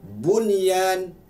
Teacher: Penambahan daripada hukum idgham tadi dengan 4 huruf tadi, ya, waw, min, nun, ada satu pembahagian hukum lagi dinamakan izhar mutlak. Walaupun nun mati bertemu dengan ya, tetapi tak boleh didengung.